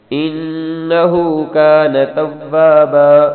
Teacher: انہو میں نون پر غنہ کرنا ہے، ہا گرجنے والی ہا ہے